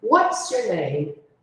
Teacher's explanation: Você vê que no início tem um pico e aí depois desce.